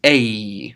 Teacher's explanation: when epsilon runs into that particular diphthong a it just forms a longer version of a